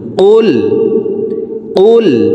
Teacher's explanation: কুল জিব্বার গোড়া থেকে উচ্চারণ করব